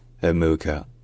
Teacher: Nikki Amuka-Bird. So, her first surname is Amuka, with the stress on the second syllable